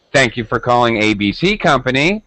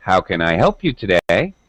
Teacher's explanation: It's called drop rise, and in English, we use this when we're talking to a stranger or customer service, like customer service phone calls. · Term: drop rise intonation